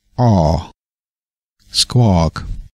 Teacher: es ist eigentlich so ein Mittelding zwischen O und A.